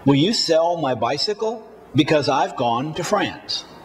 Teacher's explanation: The time between each stressed word is the same, about half a second. For this reason, structure words are often spoken faster and with less volume than content words. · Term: sentence stress